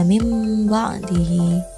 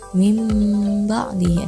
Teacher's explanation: merubah bunyi nun atau tanwin dengan bunyi mim yang disamarkan disertai dengan suara mendengung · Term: iqlab